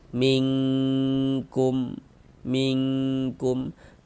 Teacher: nun sukun kita samarkan bunyi nun sukunnya.